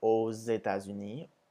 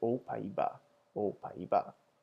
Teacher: AUX, which is pronounced as O, but when it comes before a vowel, you make the Z sound. So here we have aux États-Unis, but remembering back to the word for the Netherlands, we would say aux Pays-Bas, aux Pays-Bas.